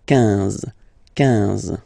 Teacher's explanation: Same thing here, U doesn't exist, so quinze, quinze, quinze, alright? IN, nasal, so it's un, quinze, quinze